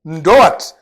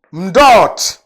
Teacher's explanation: Et les autres dialectes vont dire mdot. Au lieu de la diphthongue, O-A, on contracte pour donner O, un O long.